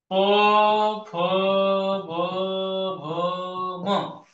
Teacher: ओष्ठ वर्ण येथे ओठ एकमेकांना चिटकतात, या वर्णांचा उच्चार करताना ओठ एकमेकांना चिटकतात